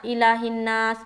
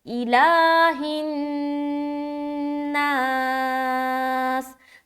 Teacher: کھڑا زبر ہے، تو اس کو سرسری طور پر نہیں پڑھنا الہ الناس، ایسا نہیں پڑھنا، لام کو لمبا کرنا ہے